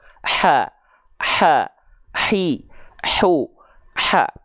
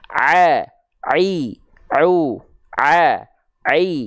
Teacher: itu adalah katub epiglotis Waduh sedap ya ya dirasakan dari sini kalau H kecil dilafalkan dengan nafas nafasnya karakteristiknya berbisik atau seperti orang kepedesan